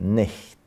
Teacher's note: ch disappeared, the vowel was lengthened, and the long E in nicht started to be pronounced as I.